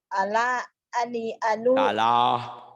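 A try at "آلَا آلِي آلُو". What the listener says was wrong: Salah itu mah panjang, panjang. Salah. Ala, ali, alu, itu.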